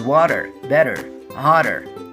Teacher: this sound can be produced by changing the T, which is in the middle of the word and also surrounded by vowel letters, into a little d